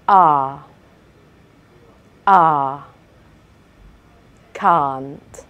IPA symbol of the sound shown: ɑ: